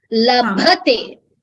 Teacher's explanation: the bhakara needs a mahaprana, which you are not clearly giving. I would request you to please focus on the mahaprana in bha.